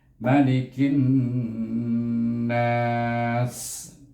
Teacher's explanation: Dan kemudian huruf sin itu hendaklah dihamas dan safir, hukumnya iaitu hamas dan safir, maka kita baca dia berangin dan berdesir